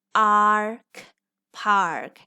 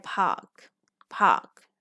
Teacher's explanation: ये American English में इसे आर बोलेंगे, ए आर टुगेदर आर बनेगा। ब्रिटिश इंग्लिश में ये अ साउंड करते हैं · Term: आर कंट्रोल्ड वाल्स